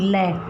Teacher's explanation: ल में जीभ की नोक हमारी ऊपर टच होगी और इसकी जो ध्वनि है वो दोनों साइड से, दोनों बगल से बाहर निकलेगी, ल, तो इसको पार्श्विक व्यंजन बोलते हैं।